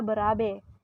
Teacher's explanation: yang kedua fonim e mempunyai dua macam realisasi yaitu yang pertama direalisasikan sebagai bunyi e Tengah atas depan tak bundar apabila berada pada silabel terbuka